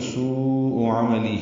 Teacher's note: ہا کے نیچے کھڑی زیر ہے مد صلہ، 2 حرکات لمبا ہوگا